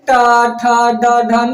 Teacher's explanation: और र और मूर्धन्य स्व का उच्चारण जो होता है ना, उच्चारण स्थान वह मूर्धा है, अतः इन्हें मूर्धन्य वर्ण भी कहते हैं